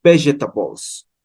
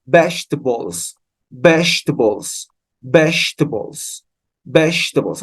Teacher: Lo correcto es que en la G haya un sonido como el sonido del pronombre she, ese sh, ese sonido sibilante en la G. Y hacemos besh, besh.